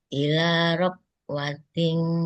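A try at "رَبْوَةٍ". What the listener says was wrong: Rob. Kol-kolahnya jangan lupa. Kol-kolahnya. Rob.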